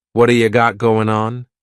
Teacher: that T at the end of the word what is going to change to a D sound